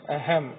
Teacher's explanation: तो अनुस्वार का जो उच्चारण है वो नाक से होता है। यह हमेशा स्वर के बाद ही आता है।